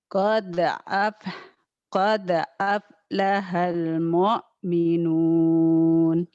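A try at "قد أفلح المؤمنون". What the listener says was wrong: Qad aflahal mu-nya nekannya biasa aja, jangan Qad aflahal mu'minun.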